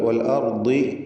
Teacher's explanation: ദ്വാദിന് കുറഞ്ഞ തഫ്ഖീമാണ്, കസ്ര ആയതുകൊണ്ട്.